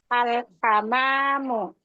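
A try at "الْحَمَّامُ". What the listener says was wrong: Mimnya tasydid. Al-hammamu.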